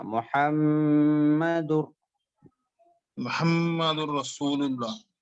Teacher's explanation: میم پہ تشدید ہے تو غنہ کرنا